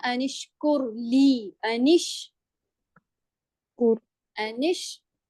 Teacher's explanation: نون کو شین کے ساتھ ملاتے ہیں، حمزہ کے ساتھ نہیں ملاتے کیونکہ وہ حمزۃ الوصل ہوتا ہے